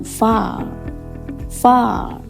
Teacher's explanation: simbol a dengan titik dua contohnya dalam kata far atau far mulut terbuka lebar lidah ke belakang far far